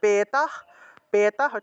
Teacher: তাই হসন্ত যুক্ত দন্তস্য টাকে হ এর মত করে উচ্চারণ করা হয়ে থাকে ঠিক আছে হসন্ত যুক্ত হ এর মত উচ্চারণ করা হয়ে থাকে